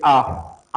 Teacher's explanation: आ बोलने मुह खुलता है लेकिन गोल नहीं होता है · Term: अवता मुखी